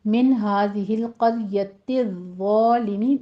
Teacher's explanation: من میں اظہار حلق کی کریں گے، نون ساکن کا قاعدہ ، آگے ہا کو اکس حلق سے ادا کرنا ہے، 2